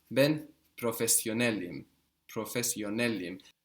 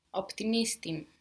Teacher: you will be putting the accent just before this im ending. Ben professionelim.